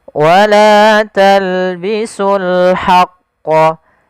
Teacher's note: Di sini ada alif lam qamariyah, yaitu alif lam kita tulis dan kita baca dengan jelas suara lamnya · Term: alif lam qamariah